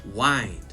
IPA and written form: waɪnd (wind)